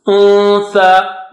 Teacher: Go to the makhraj of the word after noon. For example, untha. So go to tha first, and then don't touch the tip of the tongue. At that spot, just don't touch it, and then take the sound out from your nose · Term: ikhfa